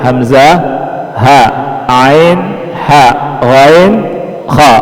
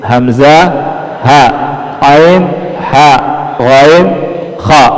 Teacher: Jadi urutannya itu tenggorokan bawah hamzah ha tengah ain ha atas gin k itu urutannya ya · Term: huruf-huruf izhar